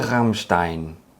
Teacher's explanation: you can make a r sound not with a tip of your tongue but from the back of your throat kinda like gargling but without water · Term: guttural sound